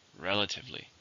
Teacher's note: How many syllables in the word relatively? 4. Stress on the first.